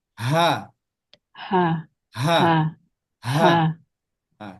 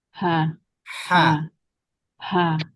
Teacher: Kalau H besar agak ditekan kalau H kecil ditipiskan